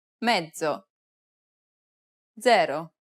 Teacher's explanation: This consonant sound is like a combination of a D and a Z sound. It starts off as a D sound, but ends with a Z sound.